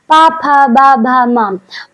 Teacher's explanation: पा वर्ग पा, फा, बा, भा, मा। और पा वर्ग ओष्ठ ध्वनि से आता है।